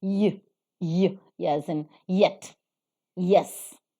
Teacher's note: what is called as the palatal sound the palatal sound in the production of which only the hard palate is involved